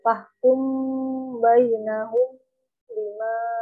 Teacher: Ini jadi di dengungkan ya, dilembutkan huruf mimnya kepada huruf ba. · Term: ikhfa syafawi